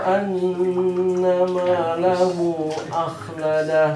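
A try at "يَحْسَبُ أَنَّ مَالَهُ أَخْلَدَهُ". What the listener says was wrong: Kurang panjang, kurang 5 harokat.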